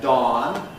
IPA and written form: dɒːn (Dawn)